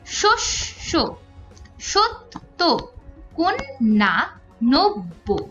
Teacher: শুধুমাত্র যুক্ত ব্যঞ্জন এর ক্ষেত্রে যদি এমনি কোন একটা বর্ণের সাথে পদের মধ্যে বা অন্তে যুক্ত হয় জ ফলা তাহলে কিন্তু সেটা দুইবার উচ্চারিত হয়